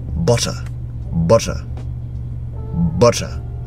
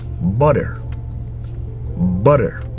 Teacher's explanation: in the UK you hear the T in the word but in the American accent it's absolutely different you don't hear